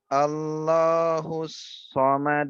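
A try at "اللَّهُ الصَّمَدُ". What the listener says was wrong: Lamnya tebalkan sedikit. Allah. Allah.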